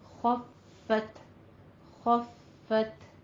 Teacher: تا میں حمز کرنا ہے، فا مشدد ہے تو تھوڑی سی سختی کر کے آگے چلنا ہے۔ خفت خفت موازینہ اور جس کے نام اعمال کے وزن ہلکے ہوں گے۔